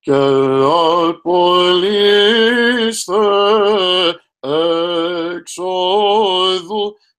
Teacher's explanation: very important to make sure to stop the tone, put at least a glottal stop in between ke apoliste ex odu. It's 2 different words here, right?